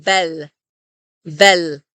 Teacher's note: So even when the L sound is at the very end of a syllable or at the end of a word in Hebrew, we still use the same L that we do in let. So it's as if we were saying bel, bel.